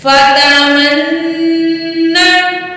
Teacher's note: मीम तशदीद में हमेशा गुन्ना होता है, तो यहाँ भी हमने गुन्ना करना है।